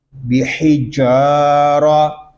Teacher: را کو پر پڑھیں گے کیونکہ را کے اوپر زبر آ گیا ہے